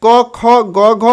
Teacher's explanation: घ अघ को कंठ स्थान से उच्चारण होता है याद रखिएगा कवर्ग जो है कंठ स्थान से उच्चारण होता है